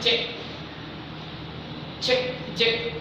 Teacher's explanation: अगर मैं बोलता हूँ चे, तो क्या से? चे चे चे, तालु से।